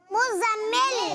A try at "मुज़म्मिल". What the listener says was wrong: मुजम्मिल, जा पर तशदीद और मीम पर भी तशदीद है, तो मुजम्मिल।